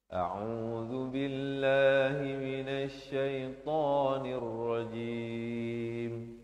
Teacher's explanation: Jadi pastikan ya di situ kita bacakan dengan lafaznya hamzah dan ain. Dengan zal di hujung lidah.